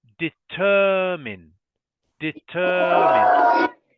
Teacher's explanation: Okay, another word that most of the Indians struggle to pronounce is determine. Okay, so this word, the stress or the emphasis is on the second syllable